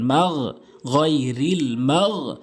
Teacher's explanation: হলকের শেষ থেকে উচ্চারণ করবেন